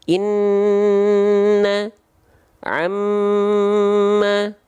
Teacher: Nun dan mim baru dia ditahan karena ada hukum tajwid gunna